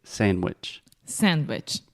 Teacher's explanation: if we are speaking quickly, we almost don't even say the D sound in the middle of this word. We simply say sandwich.